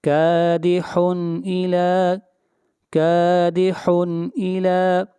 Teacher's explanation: تنوین کے بعد حروف حلقی میں سے حمزہ ہے، اس لیے یہاں پر اظہار کریں گے